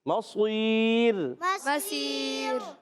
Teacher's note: مصیر میں صاد موٹا کرنا ہے، راہ کو باریک کریں گے۔